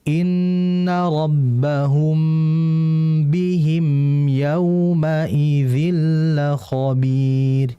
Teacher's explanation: Mim mati ketemu ba itu adalah ikhfa syafawi, jadi harus didengungkan dahulu.